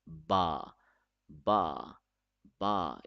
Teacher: we read it by closing our lips, and we will not close our lips very hard. We will not say it ba like that, not at all.